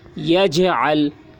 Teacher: یجعل، یا جیم زبر یج، عین لام زبر عل، یجعل، یہاں پر جیم میں قلقلہ ہو رہا ہے کیونکہ جیم حروف قلقلہ میں سے ہے اور اس پر جزم ہے، اس لیے جیم میں قلقلہ ہوگا.